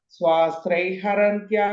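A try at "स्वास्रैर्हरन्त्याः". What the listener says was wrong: Okay, I'm not sure if you're saying srai or strair. And the T sound, it won't come. Just swasrair.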